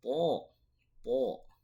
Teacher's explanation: dari ujung lidah bertemu dengan pangkal gigi seri atas